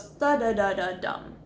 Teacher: you want to end on that lower voice tone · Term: authoritative voice tone